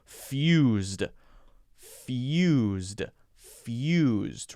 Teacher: the tough sound is the Y sound after the F